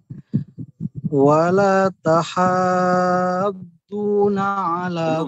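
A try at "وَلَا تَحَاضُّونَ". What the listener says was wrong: itu baru 4 harokat. Panjangnya 6 harokat. Wala tahadduna.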